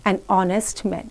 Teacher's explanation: H of the word honest is silent here. The word begins with a vowel sound.